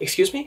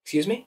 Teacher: both of these excuse me and what was that they're both a rising intonation